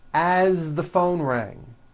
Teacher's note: As, you pronounce it with a voiced Z.